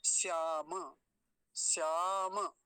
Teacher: अब ये वाला वो श्याम नहीं है, वो श्याम जो चूड़ी बेचने आता है वो ये वाला है जिसमें तालव्य शकार होता है है ना, तालव्य शकार है ही नहीं, ऐसा है दंतीय सकार। और दूसरी बात और एक काम की है, वो है मकार पूरा है, हलंत नहीं है, तो श्याम नहीं बोलेंगे, श्याम ऐसा बोलेंगे, श्याम।